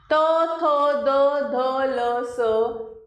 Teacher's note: दंत, मुख कम खुला, जीभ ऊपर के दांतों से लगी हुई।